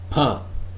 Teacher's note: You can feel the puff of air when you produce this sound · the definition of p is that it is an unvoiced bilabial plosive